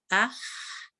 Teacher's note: फतहा दम्मा कसरा जहर के साथ है, यानी इसमें आवाज होती है, और हा में एयर है, तो एयर में हा एंड देन हा, ये हा है आपका आह।